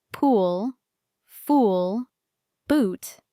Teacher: The long ooh. This sound is longer and deeper. You round your lips more. You hold the sound.